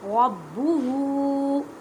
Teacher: را کو پر پڑھیں کیونکہ را کے پر زبر ہے.